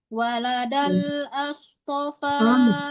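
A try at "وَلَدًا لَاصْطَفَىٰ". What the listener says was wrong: Kenapa as dibaca itu yang tasdidnya ya. Waladallas, kenapa as dibaca? Itu kan lam. Tasdidnya lam ya lam dibaca, jangan diganti dengan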